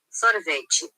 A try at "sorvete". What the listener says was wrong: Chi, not che. And sorvete here sounds like a serviette.